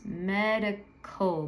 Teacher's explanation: col can be a little tricky because it goes k in the back and then the L happens